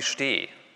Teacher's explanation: hier kommt ein Sch, also ein Frikativ, und dann fällt die Sonorität irgendwie runter zu der Sonorität von Plosiven und geht dann erst wieder in die Höhe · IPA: ʃ t eː